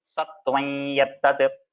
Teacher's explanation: you do not tell the makara completely by closing your lips. You just tell the next letter with a nasal sound. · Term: Anunasika